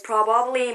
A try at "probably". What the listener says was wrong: She does it, again, she gets the emphasis on the wrong part. Probably. It's pronounced probably.